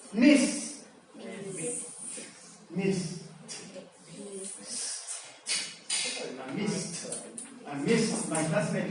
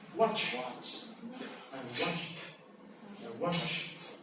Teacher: No vibration, pronounced as a t. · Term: voiceless